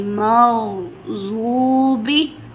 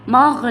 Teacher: غائن موٹے حروف میں سے ہے، تو ہم اس پہ قلقلہ بالکل بھی نہیں ہونے دیں گے، ہم اس کو ایسے پڑھیں گے کہ آواز جاری رہے گی